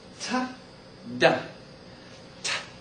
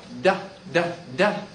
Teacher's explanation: t you don't feel vibration so it's voiceless du d du you do feel the vibration it's voiced